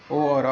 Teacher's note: कंठ और ओष्ठ में ओ और औ आएगा, ये कंठोष्ठ बोलेंगे इनको।